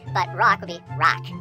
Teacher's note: it sounds to me like it goes into a regular ah, or at least a Middle American ah, when it is preceded by a C sound or a T sound